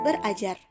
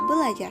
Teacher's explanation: bunyi R didisimilasikan dengan bunyi L sehingga menjadi kata belajar